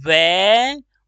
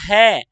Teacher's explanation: है में वायु की मात्रा ज्यादा निकलती है तो जो हमारे वायु की मात्रा कम निकलती है यदि बात